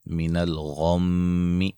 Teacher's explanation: غین کو موٹا ادا کریں گے، میم مشدد پہ غنہ ہے